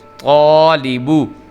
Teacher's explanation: جو طا ہے یہ پر کر کے چونکہ پڑھا جانا ہے اس لیے الف بھی پر کر کے پڑھا جائے گا